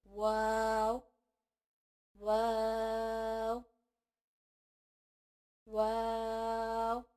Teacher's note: واو دونوں ہونٹوں کو گول کرنے سے ادا ہوتا ہے